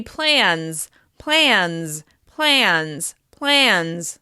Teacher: This means the third person singular, or the plural, should be plans, plans, plans, plans. The Z sound follows a voiced sound.